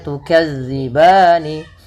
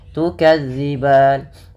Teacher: Awalnya tukadzibani. Karena diwaqafkan maka nunnya mati. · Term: sukun arid